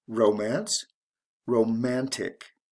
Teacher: e is changed to t before adding the ending romantic so it goes from the first syllable to the second syllable in stress